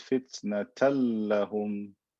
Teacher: this tanween became a lam, right, with shadda, because I converted it into a lam, then I merge it into the next letter.